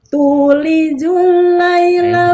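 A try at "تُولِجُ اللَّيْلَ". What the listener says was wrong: bukan jul. Huruf jimnya jangan terlalu becek itu. Jangan jul, tapi jul. Tulijul.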